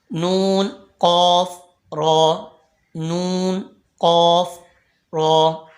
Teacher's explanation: होते हैं नून कफ र नून कफ र नून का मखर नून जबान का किनारा और दांतों की जड़ से अदा होता है · را زبان کا کنارہ پشت سمیت دانتوں کی جڑ سے ادا ہوتا ہے